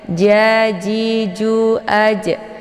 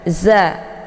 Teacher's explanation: Nah, ini antara huruf jim dengan huruf zai ini berbeda ya posisinya, atau posisi makhrajnya itu berbeda. Jim letaknya di lidah bagian tengah ya, ja, ji, ju, aj, dan dia sifatnya adalah qalqalaf ya, dipantulkan. Sementara zai ini posisinya di ujung lidah ya, sejajar dengan 4 gigi seri bagian atas. Za, dan sifatnya itu adalah sofir, jadi ada desis anginnya yang begitu jelas ya.